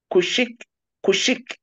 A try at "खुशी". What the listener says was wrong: No, where is खुशिक, there is खुशी only, KHUSHI।